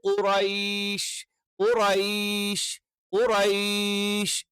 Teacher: ക എന്ന് പറയുന്നതിന്റെ കുറച്ചുകൂടി ബാക്ക് സൈഡിൽ നിന്ന്. അപ്പൊ നാവിന്റെ ആരംഭം അഥവാ നാവിന്റെ മുരട് എന്ന് നമുക്ക് പറയാം. അതിന് നേരെ മേലുള്ള അണ്ണാക്കിന്റെ മൃദുലമായ ഭാഗം അല്ലെങ്കിൽ അണ്ണാക്കിൽ ചേർത്ത് വെച്ചുകൊണ്ടാണ് നമ്മൾ എന്ത് ചെയ്യുന്നത്, ക ക ക എന്നുള്ള ഉച്ചാരണം പറയണം.